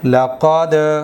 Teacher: جو زبان کی نوک ہے یہ اوپر کے دانتوں کی جڑ پر ٹچ ہوگی تب جا کے دال ادا ہوگا۔ تو قلقلہ کے اندر بھی ہمیں ایسے ہی ادا کرنا ہے دال کو، لیکن ان دونوں کو آپس میں ٹچ کر کے فوراً الگ ہٹا دیں گے، اسی کو کہتے ہیں قلقلہ کرنا۔